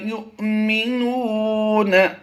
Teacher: حمزہ ساکنہ کو ہمیشہ جھٹکا دے کر پڑھتے ہیں ، یہ جو جزم ہے یہ حمزہ پر پڑھی جائے گی،